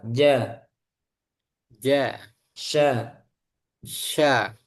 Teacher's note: syin tengah lidah sama dengan jim